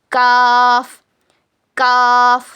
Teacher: जबान की जड़ को ऊपर के तालू में लगाने से काफ अदा होता है। It is pronounced when the back portion of your tongue which is near to the throat touch the hard palate.